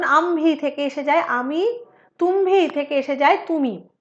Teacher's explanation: নাসিক্য মহাপ্রাণধ্বনিরও মহাপ্রাণতা লোপ পেয়ে যায়